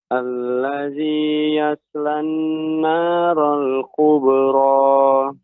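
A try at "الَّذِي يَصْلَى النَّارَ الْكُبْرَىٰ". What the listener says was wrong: Ya, kurang tebal Bapak. Masih belum tebal. Yas. Bedakan kalau tipis, yas. Ini tipis. Yas. Akan tapi, yas. Demikian.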